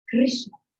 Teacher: So it's not the U sound, the sound that we would make. The R's are kind of rolled. So the R, get that little tongue up there at the top. Krishna. A bit of a roll in there.